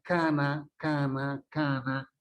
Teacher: todo sale por la cavidad nasal